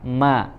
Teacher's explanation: makrojnya tertutup tidak bisa keluar sama sekali suara dari makhrajnya tetapi ada celah ya dari hidung sehingga dia keluar suaranya lewat lewat hidung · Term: bainiyah